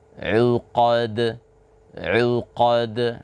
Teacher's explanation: Sama juga seperti huruf qaf dan huruf ba tadi, dal jangan sampai ada seperti huruf hamzah di ujungnya ketika kita mengqalqalahkan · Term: berqalqalah